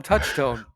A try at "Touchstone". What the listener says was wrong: Sounded like tones. Sound like you were hitting your phone.